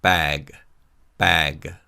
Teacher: Now, in English, the sound of the final consonant of a syllable or a word is heard slightly. So in the word bag, the final consonant G sound is heard slightly when we say this word.